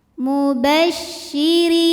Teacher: huruf ro dibunyikan secara tarqik sebab berbaris kasrah maka cara bacanya tipis · syin punya sifat yang tidak dimiliki huruf lain namanya tafasi artinya ada sebaran angin di dalam mulut mubasyiri huruf ro dibunyikan secara tarqik sebab berbaris kasrah maka cara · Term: tafashi